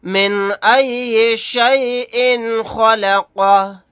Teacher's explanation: آیت کرنے کی صورت میں ہا کو ساکن بنا کر پڑھیں گے۔